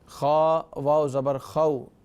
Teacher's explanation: جب فا ساکن ہو جائے گا وقف کی وجہ سے تو پھر ظاہر ہے کہ اس میں مد کی صورت بنے گی